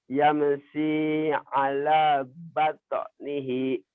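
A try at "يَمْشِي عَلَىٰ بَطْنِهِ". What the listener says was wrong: Yamshi, sini gede ya. Yamshi ala batnihi.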